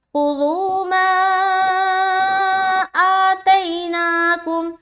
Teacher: آ کو بھی کھینچیں گے کیونکہ کھڑا زبر ہے، ایک الف کی مقدار کے باقدر اسے بھی کھینچنا ہے